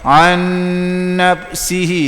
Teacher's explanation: Dia nak an nafsihi, 2 harakat dengung gunah. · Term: idgham ma'al ghunnah